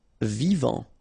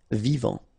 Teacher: Final T not pronounced.